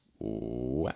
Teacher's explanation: I started low, right? Ooh, then we took it really high. It's like, what? And then we brought it down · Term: pretty wide range